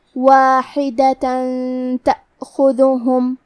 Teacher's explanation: کلمت واحدہ میں آخری میں تا پہ تنوین زبر ہے، پھر حرف التا آتا ہے کلمت تأخذہم، یہاں حکم ہے اخفاء، تو ہم یہ حکم کو غنہ کے ساتھ ادا کریں گے